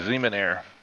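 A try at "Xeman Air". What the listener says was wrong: It's actually Eamon Air. You don't say the X. Because the X doesn't really have a pronunciation to it. It doesn't have a sound. It's like xylophone. It's spelled with an X, but you don't pronounce the X. That's the reason why everybody says xylophone.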